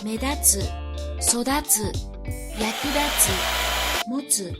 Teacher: Any verb that ends with tsu has an accent on the second to last beat of the word in their dictionary form.